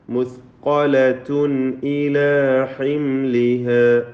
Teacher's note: തൻവീനിന് ഇൽഹാർ ഹൽഖി നൽകി മണിക്കാതെ വെളിവാക്കുക